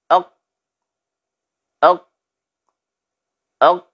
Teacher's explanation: Tertahannya aliran suara saat kita mengucapkan huruf qaf ini. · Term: asyiddah